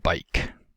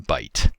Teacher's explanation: the process of velar fronting is common where k type /k/ sounds are replaced by t type /t/ sounds